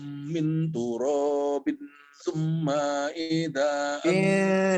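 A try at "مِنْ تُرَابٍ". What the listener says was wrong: Min turabin panjang. Minnya panjang, min turabin.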